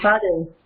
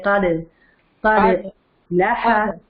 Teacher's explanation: آواز سے کھڑکھڑانے کی آواز آئے، دال کے اوپر ایکو کی آواز ہے